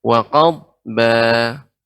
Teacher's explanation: Wa qadba ini juga dhad masuk huruf isti'la sehingga ketika sukun adanya seperti suara ya naiknya ke langit-langit